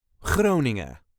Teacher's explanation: The second G of Groningen is part of the ing, so that is not a harsh g.